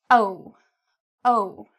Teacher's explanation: Notice my lips are rounded. Okay, they come outward. O. They're not flat.